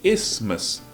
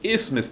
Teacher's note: Aprendi hoje que o TH não se pronuncia. É isthmus. Correto dizer isthmus.